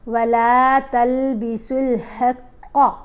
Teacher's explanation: अब यहाँ पर क़ाफ़ को मोटा पड़ा, वला तल्बिसुल हक़्क़, क़ाफ़ मोटी पड़ी।